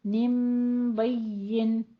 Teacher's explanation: اس نون کی آواز کو، نین کی آواز کو ہم نے میم میں بدل کے پڑھنا ہے با کے ساتھ ملا کر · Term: اقلاب